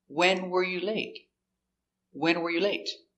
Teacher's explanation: We stress the important word, the question word, when.